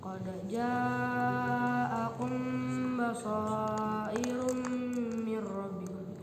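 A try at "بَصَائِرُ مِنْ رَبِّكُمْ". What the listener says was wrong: Jangan diidghamkan kami. Basairu mir rabbikum.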